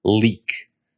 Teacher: In English, when we say a word like leak, the back and front of your tongue both come up towards the roof of your mouth. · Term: L in English